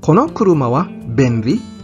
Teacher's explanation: sasabihin mo with a rising intonation sa dulo para malaman ng nakikinig na ito isang katanungan